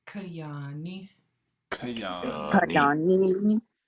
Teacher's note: That double A with no accent is ah. And then the high tone short I is after the N